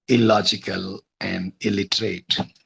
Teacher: in this case of illogical and illiterate the place of articulation has become exactly same as the first sound in the word which is La so uh the word was literate or logical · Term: assimilation